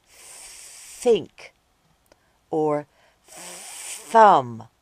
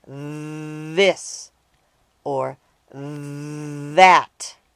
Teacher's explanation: both the unvoiced and voiced th sounds are made by sticking out your tongue and blowing out air the only difference is whether or not you use your voice while you blow